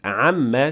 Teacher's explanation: the word amma contains meme with ghunna, since it is meme with shadda on top